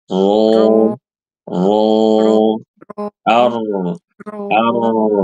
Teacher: kurang ro tebal Bu pangkal lidah naikkan